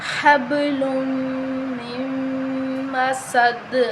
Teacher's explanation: فی جیدہا، فی جیدہا حبل، با پہ قلقلہ کریں گے، لام کو میم کے ساتھ غنہ کر کے ملائیں گے. حبل من مسد، میم مشدد ہے تو ہم اس پر غنہ کریں گے.